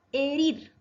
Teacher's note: Palabra aguda, herir. Acento en la última sílaba.